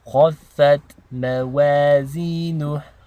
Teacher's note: the ta sakina, we want to have a very light t sound